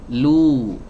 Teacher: Lam dhammah harus dimonyongkan lu. Lu. Nah, karena setelahnya huruf wawu, maka tidak usah mundur.